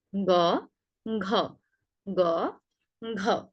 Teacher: ক, খ, তারপর গ, ঘ। একইভাবে গ অল্প প্রাণ, তাই যখন আমরা গ উচ্চারণ করব তখন বাতাসের জোরটা কম থাকবে। যখন ঘ উচ্চারণ করব তখন বাতাসের জোরটা বেশি থাকবে।